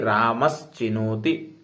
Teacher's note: ऐसे ही रामस चिनोति, सकार के बाद तवर्ग चवर्ग आया तो सा के बाद क्या है? च, तो जो पहला सा है दंत्य सा उसको भी आगे का वर्ण देख करके वो क्या हो जाएगा? श ही हो जाएगा। क्यों? क्योंकि मैंने पहले ही कहा है कि उच्चारण स्थान का आना निश्चित है।